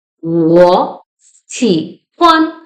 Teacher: we pronounce 我 in second tone because when two-third tone appears together, the first one changes to the second tone.